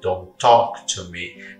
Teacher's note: perceba que eu uso um t só invés de don't talk to me · Então, ao invés de eu separar, como eu separei agora, eu falo don't talk to me. Perceba que eu uso um T só, em vez de don't talk to me.